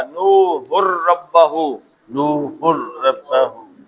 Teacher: یرملون کا قاعدہ ادغام کا، تو نون گیا اور یہ سیدھا رے میں آ گیا.